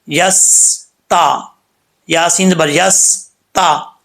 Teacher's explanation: اب یہاں پر سین ہے، سین کو پڑھتے ہوئے، سین کیونکہ ساکن ہے، سین کو پڑھتے ہوئے اکثر لوگ جو ہے یہاں پہ قلقلہ کر جاتے ہیں، ایسا نہیں کرنا